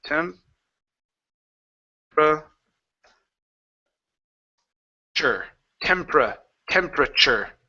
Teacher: Now we're going to treat this TU like a CH. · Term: CH sound